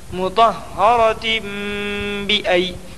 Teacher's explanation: مطہرۃ بأی، ای میں یا لین ہوگی یا ساکن سے پہلے حمزہ کے اوپر زبر کی حرکت ہے اس لیے یا لین ہوگی۔ یا لین کو نرم آواز کے ساتھ جلدی ادا کریں اور معروف پڑھیں۔